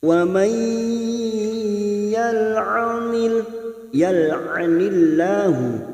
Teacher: nun sukun bertemu ya namanya bacaan idgham bi gunnah. Masuk pada huruf ya dan ditahan selama 3 harokat. Wa may yal'anillahu masuk ke dalam jalalah lafadz Allah kita baca tipis karena sebelumnya berharokat kasroh, kita baca tarkik.